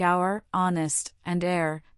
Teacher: the H is completely silent and we glide directly into the vowel sound. This is often because these words entered English from French where the H is not pronounced. · In words like our, honest, and air, the H is completely silent, and we glide directly into the vowel sound.